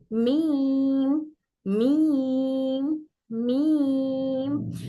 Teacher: ड्राई वाला part मिलकर खुश्की मिलकर हर्फ मीम अदा होगा लेकिन बा में जितना टाइटली बन हो रहा था मीम में उतना टाइट बन नहीं होगा · जब मीम पढ़ते वक्त में मीम की आवाज हमारे नाक में भी, नाक से भी आती है, मीम का रोल नाक से भी अदा होता है।